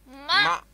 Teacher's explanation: It comes from the nose. That's why it's known as nasal sound.